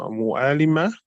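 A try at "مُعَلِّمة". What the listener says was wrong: Mu'allima. Mu'allima with a shadda.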